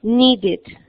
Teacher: Cuando termina en D, como need, también suena it